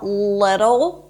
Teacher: we begin with an l sound it's not a super heavy dark L